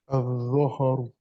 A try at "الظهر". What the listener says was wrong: Brilliant.